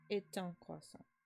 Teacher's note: And remember that this ending consonant is silent unless it runs into the next letter with a vowel. So even though it's pronounced A, sort of hear the T when you run it into un.